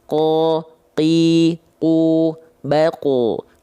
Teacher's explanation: Pangkal lidahnya seluruhnya menyentuh pada langit-langit lunak. · Jadi nggak ada percikan nafas karena sifatnya jahar. Pangkal lidahnya nempel ke langit-langit lunak semua. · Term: huruf qaf